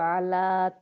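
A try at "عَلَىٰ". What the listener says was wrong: आइन अभी भी आला, आइन के लिए अपना मुँह खोलें।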